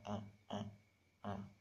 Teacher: Itu huruf yang masuk dalam vokal terbuka ini adalah huruf A. Itu lidah kita letaknya sangat jauh dari langit-langit mulut, sehingga dimasukkan dalam vokal terbuka.